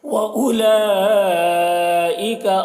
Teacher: اس مد کو مد متصل کہتے ہیں، 3-4 الف کے برابر کھینچ کر پڑھتے ہیں